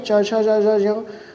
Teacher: च वर्ग का उच्चारण तालु के द्वारा होता है।